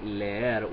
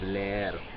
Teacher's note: you have two e sounds in a row without any y or w linking between them